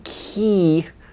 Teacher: an e in English like in key it's longer than the key in Korean key because this short long distinction is important in English so